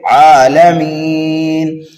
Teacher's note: عالمین پر جب وقف کیا تو یہاں پر وقف بالاسکان ہوا اور مد عارض بھی یہاں پر پایا گیا